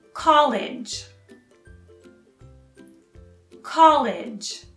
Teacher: you stress the first syllable and then with a soft g like the word age